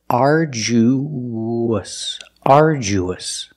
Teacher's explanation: when you link the oo to the us, there's a sound that links the vowels. It's like a W. It's the w sound.